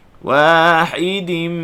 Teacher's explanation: Wahidim, panjangkan dengung pada huruf mim. Wahidim, panjangkan dengung. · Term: idgham ma'al ghunnah